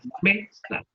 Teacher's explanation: automáticamente al me le ponemos mayor intensidad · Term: penúltima sílaba